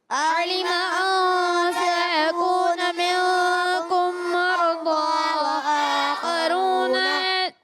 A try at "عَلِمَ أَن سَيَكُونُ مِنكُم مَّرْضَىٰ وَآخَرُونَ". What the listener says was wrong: غنہ یہاں اخفا کا یہ غنہ چھوڑ گیا، پھر یہاں اخفا غنہ، یہاں ادغام شفی کا غنہ. آپ نے ان چیزوں کو پورا کرنا ہے، ٹھیک ہے. علم ان سيكون منكم مرضى وآخرون.